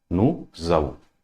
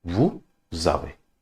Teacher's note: S and A. When we combine in the pronunciation, it will give the sound of Z.